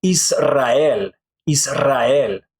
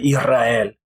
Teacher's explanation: the S kind of disappears, but it actually becomes more like Spanish J or an English H